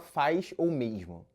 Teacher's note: Ele não apenas chia, mas adiciona uma vogal a mais no meio da palavra. É o que os linguistas chamam de ditongação.